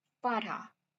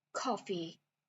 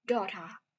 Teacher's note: The New York accent has very round A and O vowels, so the words like father, daughter, and coffee are pronounced very distinctly.